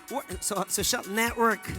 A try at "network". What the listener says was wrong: Network. You don't pronounce the T.